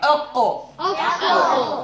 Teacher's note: Here, the cough is produced by touching the roof of the mouth with the back part of the tongue